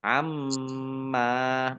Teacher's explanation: mim tasdid dibaca gunnah atau mendengung ditahan 2 harokat